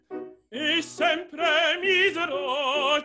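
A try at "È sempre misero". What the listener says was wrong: It's è sempre, not e sempre. è. È sempre. È sempre. So open that vowel.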